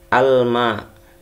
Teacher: Hukumnya adalah alif lam qamariyah atau izhar qamariyah. Jadi lamnya harus dibaca.